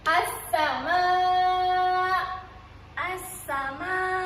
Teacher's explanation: As-sama. Kita memasukkan lam ke dalam sin. Jadi kita tak baca pun lam ni. Kita terus baca sin.